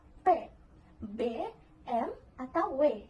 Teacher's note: Di sini ada bilabial. Hambatan terjadi pada kedua bibir atas dan bawah